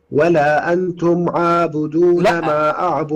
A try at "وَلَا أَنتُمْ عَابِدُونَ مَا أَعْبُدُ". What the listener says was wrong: لا الباء مكسورة.